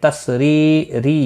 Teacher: ری یا مدہ ہے ایک الف کے برابر کھینچ کر پڑھیں گے اور را زیر کی وجہ سے باریک پڑھا جائے گا